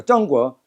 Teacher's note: 중국을 중고 하면은 북경 발음이 아니에요. 근데 정고 하면 북경 발음입니다.